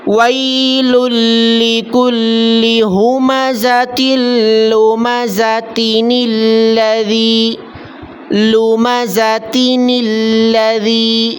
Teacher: یہاں تک بات سمجھ میں آ گئی کہ اگر تنوین ہو اور اس سے اگلا لفظ الذی ہو تو ہم تنوین والے لفظ کے بعد نون بڑھائیں گے، نون بڑھا کر اگلے لفظ کے ساتھ جو الذی ہے اس کے لام کے ساتھ ملا لیں گے، اور یہ تب ہے جب آخری لفظ پر تنوین ہو۔ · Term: نون قطنی